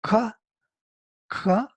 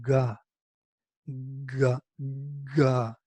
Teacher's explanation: you can hear voice before the touch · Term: voiced consonants